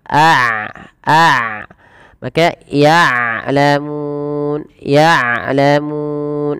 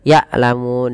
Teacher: jangan sampai dibaca dengan yalamun dengan Hamzah tapi dengan Ain